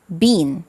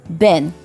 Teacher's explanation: The key is tongue tension. Long E and short E use similar tongue positions, but for long E, your tongue is tense, and for short E, it's relaxed. Try this. Say E, then keep your tongue in the same spot and relax it to say E.